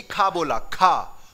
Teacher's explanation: जैसे ही खा बोला तो हवा निकली, का में नहीं निकली